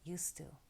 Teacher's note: Used to, although it's 2 words, we actually pronounce it as a single word. And we drop the D because the T sound is stronger